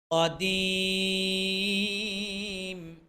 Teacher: কফ জিহ্বার গোড়া থেকে উচ্চারণ